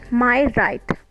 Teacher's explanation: My is unstressed and right is stressed. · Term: iamb